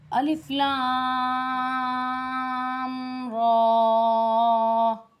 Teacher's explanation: اس را کے اوپر کھڑا زبر ہے، یہ تھوڑا کھینچا جائے گا